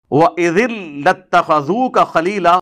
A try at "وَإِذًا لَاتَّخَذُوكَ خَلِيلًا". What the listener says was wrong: اور نہیں پتر نہیں، اذ لاتخذوک نہیں ہے، وَإِذًا لاتخذوک خلیلا،